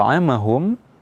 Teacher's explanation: dibaca dengan dengung yang paling sempurna durasinya lebih panjang daripada dengung pada ketika Nun dan mim sukun yang lainnya